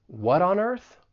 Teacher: I am going to pronounce it as a flap T it's going to sound like a soft D · we can link that flap T with the vowel sound in on.